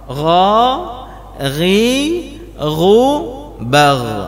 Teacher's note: Tapi begitu kita mengucapkan huruf kha dan ghain, kha lidah kita bahagian belakang itu naik, Pak.